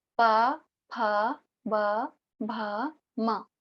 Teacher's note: प, फ, ब, भ, म सारे के सारे दोनों ओष्ठ के मिलने से उत्पन्न हो रहे हैं। बिना ओष्ठ का प्रयोग करे हम इस वर्ग को बोल ही नहीं सकते, ठीक है? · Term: ओष्ठ्य वर्ण